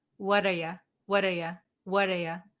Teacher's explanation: So instead of saying you, we're going to pronounce it as ya.